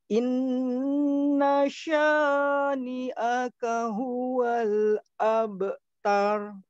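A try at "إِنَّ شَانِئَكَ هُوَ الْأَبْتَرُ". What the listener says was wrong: Baik, sya-nya itu kepanjangan sedikit. Coba dikurangi. Inna syani'aka.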